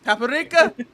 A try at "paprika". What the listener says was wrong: It's paprika. Why are you adding an extra A?